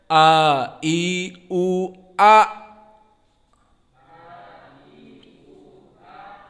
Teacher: Karena Hamzah makhrajnya deep, dalam, di mana dia di aqsa minal halq